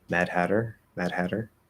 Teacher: an h or a weak d i notice that to me it usually comes out as a flap d into an h · the h is a voiceless vowel right it just it takes the shape of the vowel after it